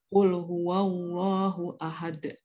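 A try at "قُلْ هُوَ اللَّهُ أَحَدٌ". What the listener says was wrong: Jangan huwawa. Huwallahu. Coba lagi.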